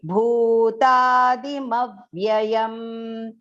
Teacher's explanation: Here that aghat on top of ma should be perfectly taken, and that bhu has to go long. Do not recite it as bhutadi.